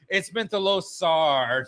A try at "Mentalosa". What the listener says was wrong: Soft A, not the hard R. Soft A.